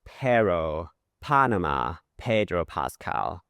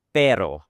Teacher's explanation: You could hear the unaspirated P and the aspirated P.